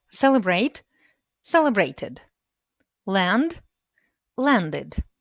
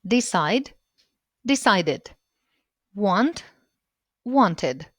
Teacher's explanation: І третій спосіб – id. Саме так закінчення читається після t та d.